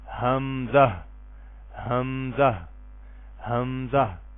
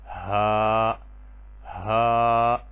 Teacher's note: اقصی حلق سے یعنی حلق کے آخری حصے سے، جو سینے کی طرف والا حصہ ہے اس سے ادا ہوتے ہیں